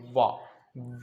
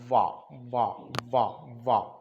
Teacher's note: वाह जब बोलेंगे हल्का सा वहां रुक जाना, वाह बोलने के साथ हल्का सा रुकें। वाह, तो वाह में देखें ऊपर वाला दांत और नीचे वाला होठ आपस में मिलता है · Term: दंतोष्ठ